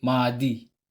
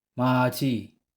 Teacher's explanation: kapag ang kasunod niya ay silent consonant with vowel I, ang pag-pronounce ni consonant D ay J.